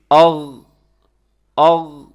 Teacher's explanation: یہاں پہ آپ آواز کو روکیے گا تو آپ کو آئیڈیا ہو جائے گا کہ غین واقعی حلق کے اوپر والے حصے سے ادا ہو رہا ہے، یعنی جو منہ کے قریب ہے۔ تو مخرج نمبر 2 غین اور خا، اور اس کا مخرج کیا ہے کہ یہ حلق کے اوپر والے حصے سے ادا ہوتا ہے، جس کو کہا جاتا ہے ادنی حلق۔